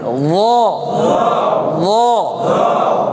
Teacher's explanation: জিহ্বার আগা এই সামনের উপরে দাঁতের সাথে লাগাই জিহ্বাটার ভিতরটাকে ফুলাই এই তালুর সাথে লাগাই দিবেন আর ছেড়ে দিবেন নরম করে ল ল।